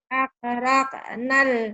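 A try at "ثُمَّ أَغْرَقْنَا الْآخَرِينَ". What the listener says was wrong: Aghraq bukan akrak. Aghraq. Summa aghraqnal. M-nya ditahan, A-nya dilepas. Raqnal akhirin. Summa aghraqnal akhirin. Summa aghraqnal akhirin.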